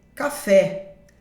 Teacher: A palavra café é uma oxítona, porque a forte é o fé.